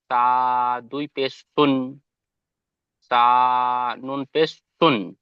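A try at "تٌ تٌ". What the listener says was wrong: মাশাআল্লাহ, খুব সুন্দর পড়েছেন।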